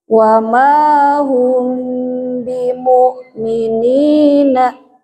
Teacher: Guna masuk ke rongga hidung dan agak ditahan ya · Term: Mim sukun bertemu ba